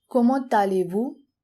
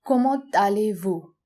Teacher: there's a liaison between comment and allez because allez starts with a vowel. So we add the T of the previous word and a from allez to make a liaison, comment allez-vous?